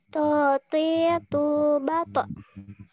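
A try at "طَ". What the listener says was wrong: Belum. Ini masih kayak tak. Nanti dilatih naikin pangkal lidah ya.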